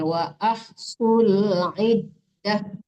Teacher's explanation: Dalnya itu tasdid bukan dipanjangkan ya